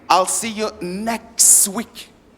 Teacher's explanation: so the last T totally disappears